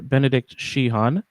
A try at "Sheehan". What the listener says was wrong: You don't need to pronounce the H. Just Sheehan. I think they do pronounce the H where the name is from in Ireland, but I don't.